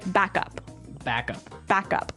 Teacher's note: so both words are stressed at about the same level hey mhm backup cuz if you were to say back up